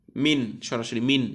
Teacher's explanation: নুন সাকিনকে আমাদেরকে স্পষ্ট করে পড়তে হবে, কোনো গুণনা নাই, কোনো মিলানো নাই।